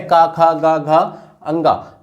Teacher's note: का वर्ग का उच्चारण जो होता है ये कंठ से होता है। याद रखिएगा, जो का वर्ग का उच्चारण है, का, खा, गा, घा, अंगा, ये जो है ये हमारा जो है कंठ से उच्चारण होता है इसका।